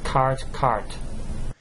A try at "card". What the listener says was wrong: No, it's cart, card. It goes back to lesson 19, the same principle here. The T is a voiceless consonant. The D is a voiced consonant, which means the vowel which precedes the voiced consonant should be longer. So then I say cart, card, fat, fad.